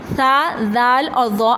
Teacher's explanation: زبان کی نوک سامنے والے یعنی کہ اوپر کے 4 دانتوں کی نوک سے لگتی ہے